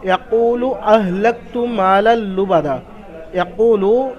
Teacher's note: ওয়াও সাকিন ডান দিকে পেশ, অ মাদ্দা একালিফ পরিমাণ টান হবে। ইয়াকুলু আহলাকতু হারাকাত, মালাল লুবাদা মিম আলিফ জাবার মা, আলিফের ডান দিকে মিমের উপর জাবার, আলিফ মাদ্দা একালিফ পরিমাণ টান হবে।